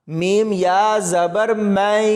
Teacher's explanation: تو یہاں پر اس میم کو یا کے ساتھ ملائیں گے، اس نون ساکن کو نہیں پڑھنا، اور میم کو یا کے ساتھ ملاتے ہوئے غنہ کریں گے۔